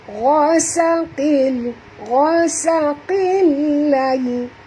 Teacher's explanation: huruf gha ini kena baca tebal, jangan baca ghasaqil tapi baca gha